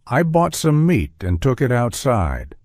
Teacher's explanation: each of the teas you hear has that stopped quality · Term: stopped te